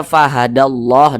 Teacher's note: depannya dibaca fahadalla begitu kan akan tetapi karena dia tadi kaidahnya apabila berjumpa dengan lafaz Allah yang di belakangnya memiliki tanda baca fathah maka dibaca fahadallah ditebalkan